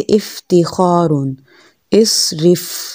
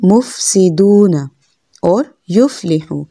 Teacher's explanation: ऊपर वाले दांतों की नोक नीचे वाले होंठ से लगाएंगे तो फ़ा अदा होगा, और उसमें एहतियात क्या करनी है कि फ़ा को नरमी से पढ़ना है, हरकत वाले फ़ा को लंबा नहीं करना और हरकत वाले फ़ा को झटके से नहीं पढ़ना। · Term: फ़ा का मखरज